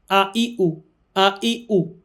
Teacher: হামজা হরফ আমাদের উচ্চারণ করতে হবে হলক বা কণ্ঠনালীর শুরু থেকে